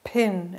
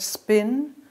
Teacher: We say it pin, it's aspirated. But after an S, as in the word spin, the P sound is not aspirated.